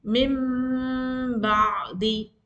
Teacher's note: There you have to change the sound of noon into meem, and you have to make a ghunna sound of 2 seconds or 3 seconds. You need to make a ghunna like a nasal, not a nasal, but a sound of humming sound. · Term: iqlab